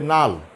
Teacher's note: উত্তরবঙ্গে লালকে বলে নাল, রংপুরের দিকে।